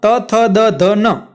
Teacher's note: આ 5 વ્યંજન છે એ ત વર્ગના છે અને તેનો પ્રકાર છે દંત્ય, કારણ કે એ તમે મૂળાક્ષર વ્યંજન બોલો ત્યારે તમારી જીભ છે દાંત સાથે અડે છે, એટલા માટે એને કહેવાય દંત્ય.